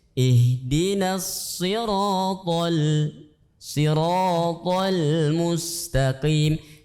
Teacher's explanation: Nah, di situ lihat sirata tebal, sirata itu tebal, tapi lamnya tipis.